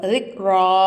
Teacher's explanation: ராக்கு மேலே ஜபருக்குலாம் நல்லா வல்லினமாக சொல்லணும்